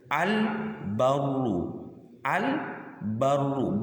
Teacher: Al dan huruf idhar qamariyahnya itu terbaca jelas keduanya.